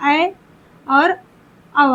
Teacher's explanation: अर्ध विवृत मतलब जिसमें आपका आधा मुंह खुला हो। आधा मुंह खुला हो और इसका एक सूत्र बताए थे जिसमें दो झुंडी पाया जाए जो स्वर होते हैं वो आपके अर्ध विवृत में आते हैं।